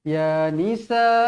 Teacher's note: Jadi hukumnya mad wajib muttasil, dibaca 4 atau 5 harakat.